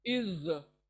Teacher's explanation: ज़ौ यानी हमारे जो जबान है वो बाहर निकलेंगी ज को अदा करने, लेकिन मोटा आवाज, गोल आवाज, इज। सामने दांतों के सिरे को जबान लगेंगी और ज अदा होगा।